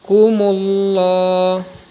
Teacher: lafaz Allah berada setelah huruf yang berharakat fathah atau dhummah maka hukum bacaannya disebut lem jalalah tafkhim cara bacanya dibaca tebal